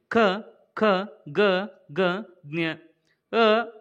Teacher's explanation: ನಮ್ಮ ಕಂಠದಲ್ಲಿ ಹುಟ್ಟುತ್ತವೆ ಈ ಕಂಠ ಭಾಗದಲ್ಲಿ ಹುಟ್ಟುವುದರ ಮೂಲಕವಾಗಿ ಇವನ್ನ ಕಂಠಕ್ಷರಗಳು ಅಂತ ಹೇಳಿ ಕರೆಯುತ್ತೇವೆ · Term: ಕಂಠ್ಯ ಅಕ್ಷರಗಳು